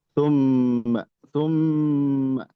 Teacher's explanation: Nah, ini gunah musyaddadah ditahan ya. Tumma tumma ditahan ee dua harakat.